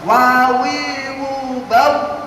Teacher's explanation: Kemudian wawu itu kedua bibir atas dan bawah atau syafatain. Wawu ba mim sama hurufnya di syafatain, kedua bibir atas dan bawah.